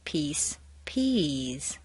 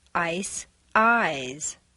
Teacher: Both voiced and unvoiced diphthongs have the underlying structure of the tone shift, or the double stair step, but the shift is much larger for the voiced ones.